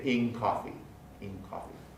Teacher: The N of in is generally alveolar, but the K of coffee is velar, so we get a change in the place of articulation. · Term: place assimilation